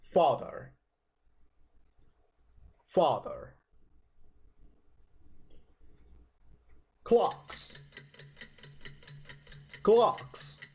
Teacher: you pronounce a with a position for an O the mouth is not very open and duration is long